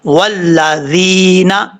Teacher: اس کو والذین نہیں پڑھنا، والذین اس طریقے سے پڑھنا ہے۔ یہاں پر یا مدہ ہے، ایک الف کی مقدار لمبا کر کے اس کو پڑھیں گے